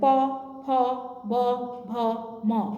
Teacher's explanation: ঠোঁট কিন্তু একবার জোড়া লাগছে একবার ছাড়ছে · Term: ওষ্ঠবর্ণ